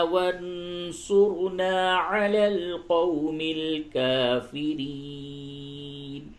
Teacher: نون ساکن کے بعد صاد ہے، اس جگہ پہ اخفا ہوگا. را کو پر کریں گے کیونکہ را ساکن سے قبل پیش ہے